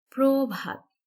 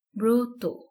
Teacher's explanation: নিয়মটি দেখি তিন নম্বর নিয়ম হচ্ছে যদি র ফালা থাকে অর্থাৎ আদ্য অ এর পরে যদি র ফালা থাকে তাহলে সেই অ এর উচ্চারণ ও এর মত হবে